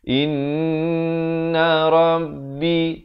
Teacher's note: In itu didengungkan 2 harakat, wajibul gunnah.